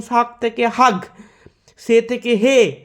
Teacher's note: ছ বর্গের প্রভৃতি ঘৃষ্ট বঙ্গালিতে প্রায় উষ্ম ধ্বনি রূপে উচ্চারিত হয় দন্তেস ও তালব্যস স্থানে হ উচ্চারিত হয়